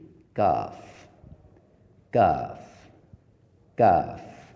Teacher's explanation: یہ قاف کے مخرج سے ذرا منہ کی جانب ہٹ کر ادا ہوگا، مگر اسے موٹا نہیں پڑھا جائے گا۔